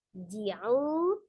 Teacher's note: ada waw sukun sebelumnya dhamma di huruf ain, maka mad tabi'i waw dibaca 2 harakat.